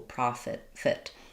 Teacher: it is going to be an I sound like it because it's a reduced second syllable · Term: reduced I